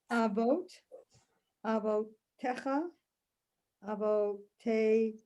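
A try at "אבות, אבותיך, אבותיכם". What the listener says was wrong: Good. Good.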